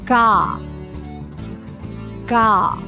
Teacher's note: on the G the back of the tongue goes really high and on the AH it drops